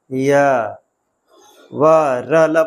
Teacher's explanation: संघर्षहीन मतलब जिनमें कोई संघर्ष ना करना पड़े। बड़े आराम से बोले जाते हैं। य व र ल बोला जाता है।